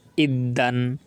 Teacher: প্রতিটা যে হরফে তাসদিদ আছে সেই হরফগুলোকে আমরা দুইবার করে উচ্চারণ করবো, একবার ডানে হরফের সঙ্গে আর একবার সেই হরফ নিজে নিজে উচ্চারিত হবে।